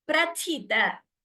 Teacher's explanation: The first tha is Mahaprana, second is Alpaprana.